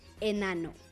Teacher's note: La vocal E es cerrada cuando está en sílaba libre.